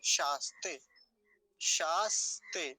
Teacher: दंतीय सकार जो है आधा है, आधा ही रखेंगे, कभी से शासते ऐसा बना दें, ऐसा नहीं करेंगे।